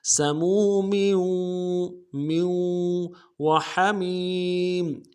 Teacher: اگلے میم تنوین کو واو کے ساتھ ملائیں گے، واو کے اوپر تشدید زور دیں گے